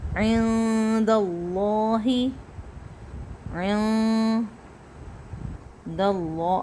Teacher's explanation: اب اللہ کو موٹا کریں گے، لیکن عین کو ہمیں باریک کر کے لے کے جانا ہے